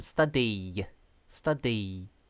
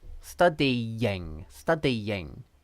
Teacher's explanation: You have to put your tongue into a y position, study, study. And then when you transition into the next vowel, which is I in this case, it sounds like there's a y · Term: y sound